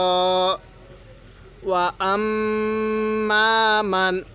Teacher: মিমের মধ্যে গুন্না করছি কেন মিমের নুনে তাসদিদ গুন্না করা ওয়াজিব মিমের উপর তাজদি আছে এজন্য মিমটা গুন্না করা ওয়াজিব